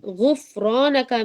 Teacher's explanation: غفرانک میں دیکھیے غین موٹا ہے اور را بھی موٹا ہے، لیکن فا موٹا نہیں ہے